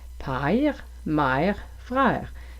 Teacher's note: on commence avec « a » et ça tourne au « est » presque au « i » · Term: diphtongue